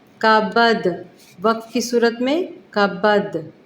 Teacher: دال کے اوپر جزم آ گئی تو یہ وقف کی صورت میں یہاں پہ تھوڑا سا قلقلہ بھی کیا جائے گا